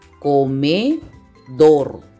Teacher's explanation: La mayor fuerza de voz está en dor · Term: sílaba tónica